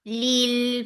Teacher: The sound is short. Lil, for kasra give e sound attached with lam, and that will be light because there is kasra before Allah subhanahu wa ta'ala's name. Lil, give the wasut on this lam.